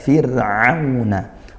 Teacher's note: ro sukun didahului kasrah maka dia dibaca tarqiq tipiskan